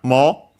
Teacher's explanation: the accent can only stay on the mo, not on the u, because the u is actually the longer vowel for the o. It's a rule in Japanese due to the evolution of the language. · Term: accented